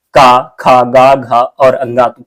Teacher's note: तो का वर्ग के जितने भी वर्ण हैं, क्या, तो का वर्ग के जितने भी वर्ण हैं, का हो गया, खा हो गया, गा हो गया, घा हो गया, तो ये जितने भी वर्ण हैं ये कंठ में किससे उच्चारित होते हैं, तो कंठ से उच्चारित होते हैं। तो घा का उच्चारण स्थान कौन सा होगा, कंठ हो जाएगा।